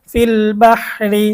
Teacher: তো র এর নিচে জের বা র সাকিন ডাইনে জের, এখানে র এর নিচে জের আসছে এজন্য রটা চিকন হবে, পাতলা হবে।